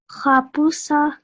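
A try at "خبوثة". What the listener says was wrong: Khabutha. So for you, little homework for you is that you have to practice your tha over the weekend.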